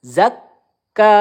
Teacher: Kaf bertasdid. Kita tekan terlebih dahulu ya